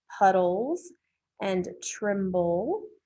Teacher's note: We have the ol sound with the schwa plus the L in puddles and tremble.